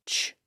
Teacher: it's a voiceless sound so the vocal folds are open and silent when we make that sound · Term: CH sound